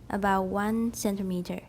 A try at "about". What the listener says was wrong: Is there a T in about?